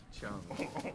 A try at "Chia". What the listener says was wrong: It's not Chung. There's no U anywhere around.